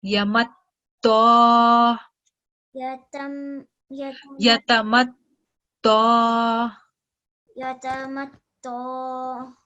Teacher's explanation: Over here, letter ta has a shadda, also a vertical fatha. So because of vertical fatha, we're going to prolong the sound for 2 seconds.